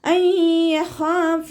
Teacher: അയ്യഖാഫ, നൂൻ സാക്കിനയ്ക്ക് ശേഷം ഇദാം ബിഉനയുടെ അക്ഷരമായിട്ടുള്ള യാ വന്നു. നൂൻ സാക്കിനയെ യായിലേക്ക് ലയിപ്പിച്ച് ഒന്നയോടുകൂടി ഓതാനായിട്ട് ശ്രദ്ധിക്കുക